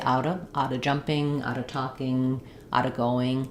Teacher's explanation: If I have a consonant sound there, I can drop the V and just say out of jumping, out of talking, out of going.